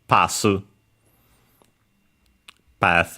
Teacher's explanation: Japanese doesn't have th and so the closest sound is s